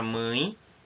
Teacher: a palavra mãe, que tem um som puxado para o I, termina com E